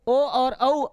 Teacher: और इसी के साथ आपका ओ दौतो कंठोष्टम, ओ और औ आ उ मिलकर के ओ बोलता, आ का कंठ, उ का ओष्ठ, तो कंठोष्ठ बन गया